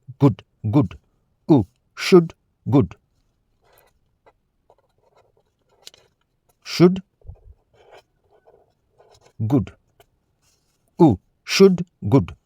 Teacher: round your lips a little and keep your tongue high and toward the back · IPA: /ʊ/